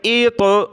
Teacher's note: ایط بہت سارے پڑھتے ات، حمزہ طا زیر ات. ات نہیں کرنا، طا کو منہ کے اندر گھمانا ہے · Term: قلقلہ